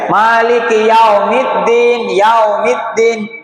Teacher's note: Jangan yaumiddin ya. Bukan o tapi u. Bukan e tapi i.